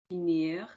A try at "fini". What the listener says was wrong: would you now say finir without the ch? But without the ch, my darling, without the ch sound.